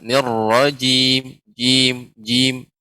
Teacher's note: Kemudian jimnya Ibu terus agak lebih dilembutkan, tidak terlalu menekan. Nirrajim, jim, ja, tidak ja.